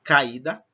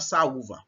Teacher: Encontro de duas vogais. Então, as duas são pronunciadas fortes, certo? As duas terão força. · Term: hiato